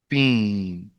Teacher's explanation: Now, if you want a nice Zai, you actually need to suppress some of the air. When you say Steen, you don't suppress any of the air. The air is coming out.